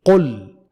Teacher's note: یہاں لفظ قل کا لام باریک یعنی لائٹ ایل کی طرح پڑھا جائے گا، کیونکہ موٹا لام صرف لفظ اللہ کے لام کو پڑھا جاتا ہے، اور قل کا جو لام ہے وہ لفظ اللہ کا لام نہیں ہے، تو لام کو موٹا یا پر پڑھنے کا قاعدہ صرف لفظ اللہ کے لام کے ساتھ خاص ہے۔